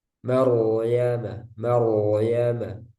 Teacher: yang berharakat fathah ini juga ro sukun sebelumnya huruf yang berharakat fathah ini dibaca tebal